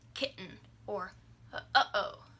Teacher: Glottal stop's easiest to hear in the middle of like kitten or uh-oh.